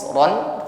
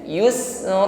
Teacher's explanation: fathah tanwin dibaca fathah biasa, panjangnya cukup satu alif saja